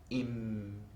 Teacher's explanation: So there the mouth remains closed and the air releases only through the nose. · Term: anuswara